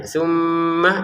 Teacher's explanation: Tsumma di sini kita ada mim bertasdid maka kita dengungkan ya. Tsumma itu pusatnya ada di rongga hidung